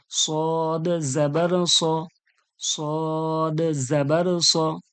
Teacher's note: এর উচ্চারণ থাকবে সদ, কিন্তু জবর এসে গেছে, আকার দিয়ে পড়া হচ্ছে, পুরো পুর করে পড়া হচ্ছে মোটা করে।